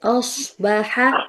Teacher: صاد کو موٹا کیجیے، الف کو باریک رکھتے ہوئے